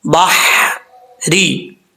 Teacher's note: اب آگے ہے با کے بعد ہا، ہا بریک پڑھا جائے گا، اس ہا کو پر پڑھنے کی ضرورت نہیں ہے، کیونکہ یہ ہا جہاں جس حلق سے ادا ہوتا ہے اس حلق کا تعلق منہ کی طرف ہے، سینے کی طرف نہیں ہے، اس لیے اس کو بریک پڑھیں گے۔